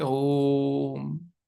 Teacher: इसका उच्चारण करने के लिए जो बाकी वर्ण है उससे तीन गुना ज्यादा समय लेना है